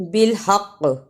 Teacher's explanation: رکنے کی صورت میں بالحق قلقلہ کرنا ہے